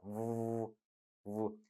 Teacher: You can notice the friction, V, V, very obvious friction, V, right? Here, for this approximant, you must produce like a ooh, ooh, ooh.